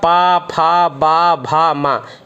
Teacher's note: और पा वाले वर्ग का पा, फा, बा, भा, मा, इसका ओंठ की सहायता से होता है। तो ओष्ठ, इसका ओष्ठ से मतलब ओंठ की सहायता से इसका उच्चारण हो जाता है